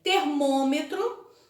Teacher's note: o acento circunflexo indica que a pronúncia da vogal deve ser fechada